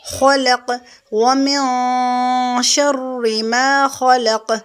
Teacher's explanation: خا کی آواز کو یعنی ہم ہیوی کریں گے کیونکہ یہ حروف مستعلی میں سے خا، لام اس کو بھی ہم موٹا نہیں کریں گے، خلق،